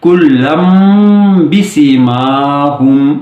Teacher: اگر تنوین کے بعد با حرف ہو، یعنی کہ اس سے لفظ شروع ہو رہا ہو تو اقلاب کرنا ہوگا، یعنی تنوین میں نون کی بجائے میم کی آواز پیدا کرتے ہوئے وصل کرنا ہوگا